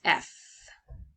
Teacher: No vocal cords vibration needed to produce this sound, but letting the air flows. So you use your top teeth over your bottom lip and you let the air go. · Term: voiceless sound